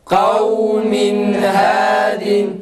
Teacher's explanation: en sonda dilimizi kaldırınca nunun mahrecinden ı sesi çıkmaması gerekir. Kalkaleye benzer bir ses çıkar.